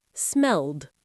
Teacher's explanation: it ends in an l sound, a voiced sound, the ed d ending uses the d sound.